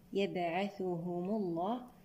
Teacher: هنا حركت ميم الجمع بالضم لمنع التقاء الساكنين